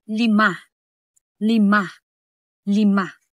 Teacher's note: Ang pang-apat na paraan ng artikulasyon ay ang tagilid. Ang hangin ay lumalabas sa gilid ng dila. Halimbawa, and bahagyang nakataas ang dila gaya ng salitang lima.